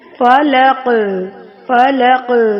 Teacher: قاف پہ کلکلا کریں گے، یہاں پہ ہماری آواز لوٹتی ہوئی ہمیں محسوس ہو